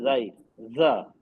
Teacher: नीचे के दांतों के अंदरूनी किनारे पे जबान की नोक लग रही है